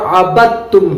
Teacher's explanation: اس لیے کہ دال کا ادغام تا میں ہو جائے گا